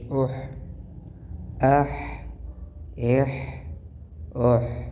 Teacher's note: ہا جو ہے وہ درمیان حلق سے نکلتا ہے، یعنی گلے کے درمیان سے، اور حمزہ جو ہے وہ گلے کے آخری حصے سے نکلتا ہے، تو ان دونوں کی مخرج کا خوب خیال رکھتے ہوئے ان کو پڑھنا چاہیے۔